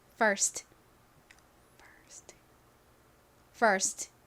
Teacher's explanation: F가 이렇게 가장 앞에 오면 거의 쌍비읍에 가깝게 세게 발음이 납니다